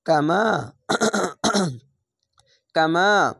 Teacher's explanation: পড়বেন কামা কাফ জবর কা মিম আলিফ জবর মা কামা কামা জাবারের পাশে খালি আলিফ এক আলিফ টেনে পড়বেন